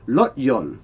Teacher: a lot of Thais replace the R if it's at the beginning of a syllable with an L.